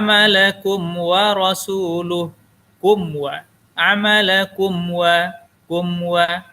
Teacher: maka hukum membacanya adalah izhar syafawi ia dibaca jelas tidak dengung